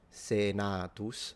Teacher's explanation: So for the phonemic vowel length, Senatus, so the A is long